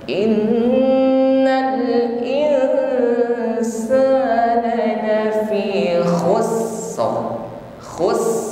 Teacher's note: sifat yang dimiliki huruf sin, yaitu hamas, jarayanun nafasi, ada nafas yang mengalir. Yang kedua rakhawah, mengalirnya suara, ya, suara huruf sin.